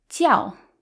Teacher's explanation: when it means religion it's the fourth tone it sounds more Angry